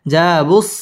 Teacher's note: জা মধ্য তাবাঈ একালিফ টেনে পড়তে হবে